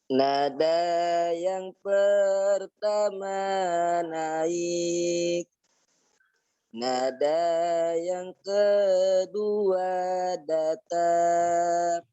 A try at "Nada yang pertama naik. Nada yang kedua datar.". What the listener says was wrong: Itu mah sama, naik dan datar ya. Bedakan. Nada yang pertama naik. Nada yang kedua datar.